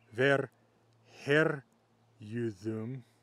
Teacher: notice that the U in the ending is still mutating that A that comes before it in the ending